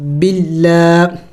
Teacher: پہلی بات اس الف کو نہیں پڑھیں گے، اور دوسری بات کہ لفظ اللہ سے پہلے اگر زیر آ جائے، لفظ اللہ سے پہلے اگر زیر آ جائے تو پھر لفظ اللہ کو باریک پڑھیں گے